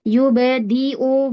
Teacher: Yubadi'u huruf dal. Dipaskan makrotnya. Ujung lidah atau punggung lidah. Nempel di tempat tumbuhnya gigi dari atas. Yubadi'u. Bukan yubadi.